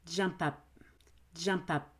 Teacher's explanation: notice i go jump and i hold my breath i have to stop that air